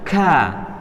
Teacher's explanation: huruf kaf itu makhrajnya agak ke depan lagi dari huruf qaf. Kemudian dia juga termasuk tipis ya, jadi mudah.